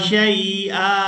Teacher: वक़फ़ की सूरत में हमज़ा पर एक ज़बर अदा करेंगे और इसको एक अलिफ मिक़दार खींचकर अदा करेंगे